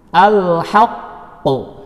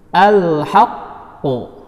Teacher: Huruf qalqalahnya yaitu qaf berada di akhir kata dan saat waqaf, dan ia pun bertasydid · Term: qalqalah akbar